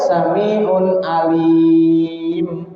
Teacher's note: kalau tanwin itu kita mau baca di akhir, diwakofkan, itu maksudnya diwakofkan dari berhenti, maka tanwinnya tidak ada ataupun hilang